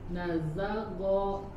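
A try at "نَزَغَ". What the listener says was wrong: huruf ghainnya lebih lembut, jadi huruf ghainnya tidak seperti huruf G ya. Nazagho, go.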